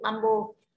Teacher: Như vậy bamboo các bạn nhận trọng âm tiết thứ hai.